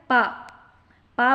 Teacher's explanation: பா வந்து இரு உதடுகள் குவிவதால் பிறக்கும் எழுத்து பா